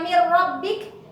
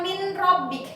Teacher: bukan dibaca min rabbik tapi dibaca mir rabbik ya, nunnya melebur, menghilang ya, karena idgham itu masuk atau melebur, meleburnya huruf seperti itu. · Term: idgham bila gunnah